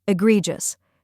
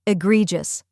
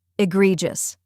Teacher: Next is gree, which rhymes with tree and is stressed.